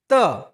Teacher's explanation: બોલતી વખતે તમારી જીભ છે તે દાંતને અડે